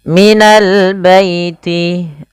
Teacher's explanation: alif lam qamariyah, lamnya dibaca dengan jelas